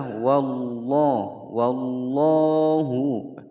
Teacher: lafaz jalalah sebelumnya fathah dibaca tebal